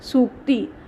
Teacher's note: ठीक इसी तरह सु जोड़ उक्ति, सूक्ति, सु छोटा और उक्ति भी उक्ति का भी ऊ छोटा। सु में ह्रस्व ऊ और उक्ति में भी ऊ जो है वो ह्रस्व ऊ है, तो ये दोनों मिलाकर के बड़ा ऊ यानी दीर्घ ऊ बनता है, तो सूक्ति हो जाता है।